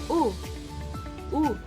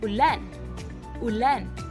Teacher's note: ang likod ng dila ay mataas, tunog malambot at malalim.